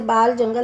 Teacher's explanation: खड़ी बोली में मूर्धन्य ल का प्रयोग मिलता है